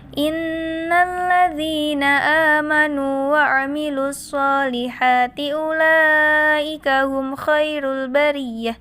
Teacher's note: Inna adalah gunnah karena di sini ada nun fathah bertasydid. Maka dibaca mendengung.